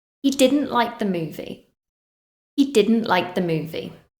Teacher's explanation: I stressed the word didn't and movie because again They Carried the most importance it was important to